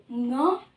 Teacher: का पांचवा वर्ण है न जिसकी साउंड अंग वाली आती है कंठ से आवाज आती है इसकी कंठ और नासिक क्योंकि ये नासिक के भी है